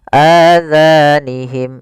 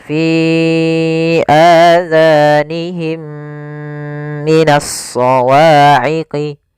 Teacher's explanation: suara mim yang pertama masukkan kepada mim kedua dan ditahan. Masukkan mim kedua, ditahan suara gunnahnya. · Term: idgham mim